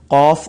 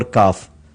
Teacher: قوف پیچھے سے نکلے گا، کاف تھوڑا سا آگے سے نکلے گا